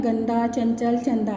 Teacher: उच्चारण में हवा केवल नासिका से निकले व उच्चारण अधिक जोर से हो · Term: अनुस्वार